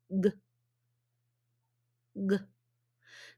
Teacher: okay so it's vibrating so it is voiced so it's blocked it's voiced but because it's blocked it cannot be a vowel sound it has to be a consonant sound